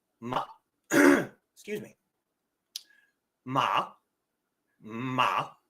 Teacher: you notice the a stays flat and even throughout · your first tone is a long flat vowel